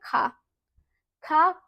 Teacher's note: तो आपको याद रखना है ये कंठ स्पर्श व्यंजन है